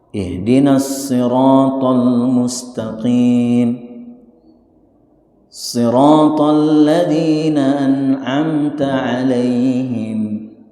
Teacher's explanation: Cara menyebut huruf shad adalah tebal.